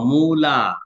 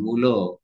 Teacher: মূলা বলতে যে টাইমটা লাগে, মূলো বলতে ওরকম বেগ পেতে হয় না, যার কারণে আকারটা ও কারে যাচ্ছে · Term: স্বর সঙ্গতি